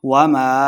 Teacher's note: الف مدہ، دو حرکات اس کو لمبا کریں گے